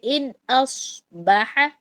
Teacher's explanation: اور ان اس میں نون اور حمزہ کے درمیان میں، یا الف جس کو آپ کہہ رہے ہیں، الف اور صاد جو ہے، نون کے بعد حروف حلقی آگے تو ہم یہاں پر اظہار کریں